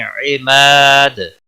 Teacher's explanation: وقف کی صورت میں دال ساکن ہوگا، اس پر قلقلہ بھی ہوگا، 3 سے 5 الف کے برابر وقف کی صورت میں کھینچ کر وقف کریں گے۔